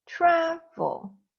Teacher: Do you hear the stress? The stronger sound of the word is tra, not at the end, vol.